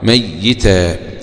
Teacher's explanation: شدد الياء مكسورة، المدنيان ويعقوب